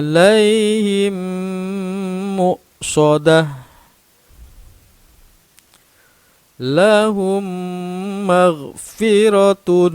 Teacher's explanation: dengan cara memasukkan huruf mim sukun pada huruf mim yang ada di depannya membacanya seperti tasydid dan wajib dibaca dengung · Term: Idgham Mimi